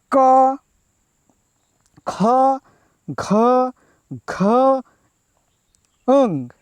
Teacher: જે વર્ણોનું ઉચ્ચારણ કરતી વખતે જીભનું મૂળ કોમળ તાળુને સ્પર્શીને કંઠમાંથી ધ્વનિ ઉત્પન્ન થાય છે તેને કંઠ્ય વર્ગના વ્યંજનો કહે છે.